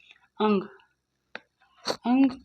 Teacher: अंग को अनुस्वार क्योंकि नाक से उच्चारण होता है